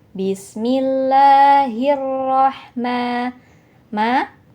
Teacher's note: Di sini juga ada nirra, disebut idgham syamsiyah, yaitu karena ada alif lam bertemu dengan huruf syamsiyah, salah satunya yaitu ro. Jadi nirra langsung dimasukkan ke huruf ro, alif lamnya hilang.